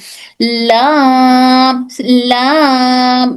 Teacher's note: लाम तब निकलता है जब जुबान के सामने का हिस्सा ऊपर के सामने के दांतों के मसूड़े को, जबान का सामने के हिस्सा ऊपर के सामने के दांतों के जो मसूड़े हैं उन मसूड़ों को टच कर कर, कहां से? सनाया से जवाहिक तक के दांतों को टच कर कर हर्फ लाम अदा होता है।